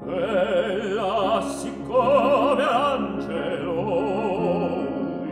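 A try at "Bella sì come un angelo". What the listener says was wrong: Maybe not, don't open the bella so much. Like it's a secret that only you know.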